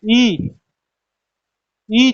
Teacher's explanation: अब बात आती है यहाँ पर क्या, कि जब हम बोलते हैं ई, ई जब भी बोलते हैं तो ऐसा लगता है कि जीभ के आगे हिस्से से बोली जा रही है, तो इसलिए अग्र स्वर ये हो जाएगा, क्योंकि जीभ का जिसमें आगे वाला हिस्सा काम करे वही तो अग्र स्वर होता है।